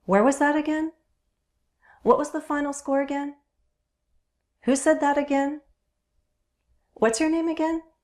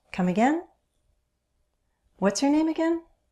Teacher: Notice how I use rising intonation in all of those questions.